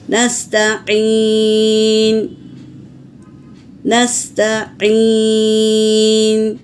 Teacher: آئین کو حلق سے صاف پڑھیں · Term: آئین کا آواز